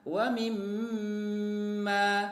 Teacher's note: ada Meme yang bertasydid ya maka dia ditahan ya selesaikan getarannya